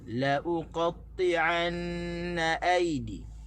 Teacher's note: La jangan tekan, u tu kita tekan, na kat belakang kita kena tekan.